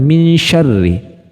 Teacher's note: maka bunyi samarnya berbeda-beda ya contoh pada kata minsyarri nah Nun bunyi Nun sukunnya itu cenderung ee masuk atau samar ke makhrajnya syin